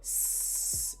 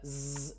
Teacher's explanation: Your mouth does the same thing, but your throat makes the vibration. So if you go S, you won't feel vibration, but then make the Z noise, you do feel it